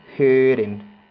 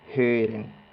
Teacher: involucramos también la H, que era como una J, entonces decimos hören.